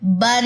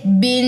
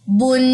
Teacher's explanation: آخر میں نون کی چھپی ہوئی آواز آ رہی ہے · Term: نون کی آواز